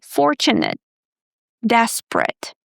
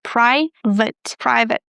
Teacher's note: Again, we don't pronounce this ending as ate, as in the verb ate, eat, ate. We pronounce it as ut. Again, the schwa sound, plus the T, ut.